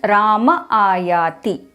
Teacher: when visarga appears between two vowels then the visarga becomes lopa that is the visarga disappears